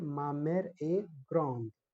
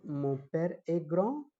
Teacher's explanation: In masculine form, we pronounce only till gran. We do not pronounce the last consonant d. But in feminine form, after that consonant, there is a vowel is coming.